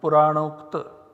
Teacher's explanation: If we take the example of a compounded form, here we have Purana plus Ukta, once again A coming at the end of this pada, U coming at the beginning of this pada, and so in place of both of them we have one substitute, namely O